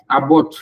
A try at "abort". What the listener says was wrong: Abort. It's a schwa sound. It's not abort. Abort. Abort. Not It's not Don't say board.